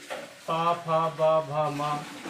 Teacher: ये आपके ओष्ठ से उत्पन्न होते हैं